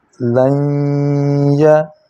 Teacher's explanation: نون ساکن کے بعد یا آ گئی تو نون کی آواز یا میں مدغم ہو گئی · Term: ادغام